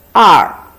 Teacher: It's more like the first tone, not the fourth tone.